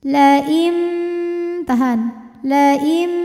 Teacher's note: karena ada nun sukun menghadapi huruf ba maka bunyi nunnya diganti jadi bunyi mim sukun Jadi bukan lagi lain tapi laim disertai dengan bunyi dengungan laim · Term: iqlab